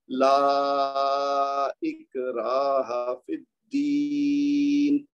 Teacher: پہلے والا لام جو ہے اس کو 4 حرکت تک پڑھیں گے یا اس سے بھی زیادہ، اور را کے بعد جو الف ہے نا اکراہ، یہاں پہ 2 حرکت دے گی کیونکہ یہاں پہ خالی مد اصلی ہے. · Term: مد جائز